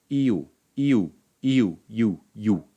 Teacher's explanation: This is actually 2 vowels in hiatus merging into one syllable, with the first becoming a semi-vowel. Semi-vowels are typically shorter than vowels and they're non-syllabic.